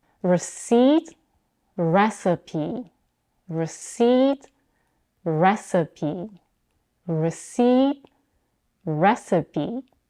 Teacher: Receipt is stressed on the second syllable, seed, and recipe is stressed on the first syllable, re. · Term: word stress